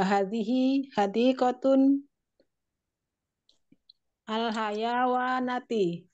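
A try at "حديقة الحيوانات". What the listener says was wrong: Hadiqatul, jangan ditanwin ya, Om.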